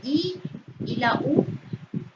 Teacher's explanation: A los fonemas I y U se les llama vocales cerradas o débiles porque al pronunciarlo se produce un sonido muy cerca del paladar, es decir, que nosotros cuando pronunciamos la I y la U, como que abrimos menos la boca, por eso es que se les llama vocales cerradas o débiles.